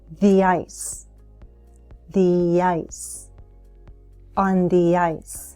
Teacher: I'm linking with a Y sound from the to ice